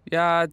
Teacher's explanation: is pronounced with a first tone in Mandarin